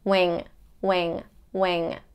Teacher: you kind of blocking your throat with the back of your tongue, bringing it up to the upper palate, and the air comes up through the nose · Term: NG sound